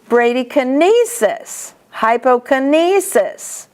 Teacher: Hemoptysis, albuminoptysis. And kinesis, the accent is on the E.